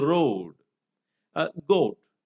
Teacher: Slack long O would turn out to become ew.